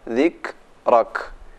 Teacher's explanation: Ada sedikit desis huruf kaf mati.